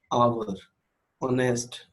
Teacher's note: Okay, now the consonant H in the beginning of आवर and ऑनेस्ट, ऊपर वाले example देखें तो आवर और ऑनेस्ट, बेशक ये एच से स्टार्ट हो रहे हैं लेकिन इनकी साउंड है आ, आवर। ऑनेस्ट, होनेस्ट नहीं है, ऑनेस्ट। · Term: वोवेल की साउंड